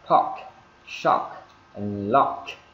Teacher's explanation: cái âm K này đó ở cuối đó, thì chúng ta thứ nhất là chúng ta bật hơi ra